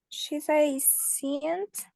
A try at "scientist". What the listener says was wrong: Sci, scientist. Sci, no, sci, no cien. Sci, sci. Dijimos que la I lo vimos el jueves en el alfabeto es I, scientist, scientist.